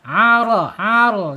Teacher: Rnya tebal ya. Rnya tebal karena harakatnya fathah.